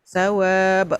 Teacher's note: Dia bila ba mati ada qalqalah. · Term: Qalqalah kubra